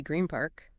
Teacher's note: the N changes to M because of the P · your lips are together straight into a P sound where they are also together than to go from N, lips apart, tongue up, to P, lips together.